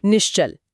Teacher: हाँ, तो नेह प्लस चल में विसर्ग के बाद च आया, जो एक तालव्य ध्वनि है। तो विसर्ग भी खुद को बदलकर तालव्य श में बदल लेता है ताकि बोलने में आसानी हो।